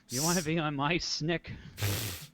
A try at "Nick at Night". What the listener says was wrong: Snick, it's Nick. There's no S.